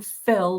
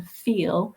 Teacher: when you move from fill, that central vowel, to feel, you can actually feel your mouth widening. If you put your finger and thumb here, start with fill, fill, feel, fill, feel.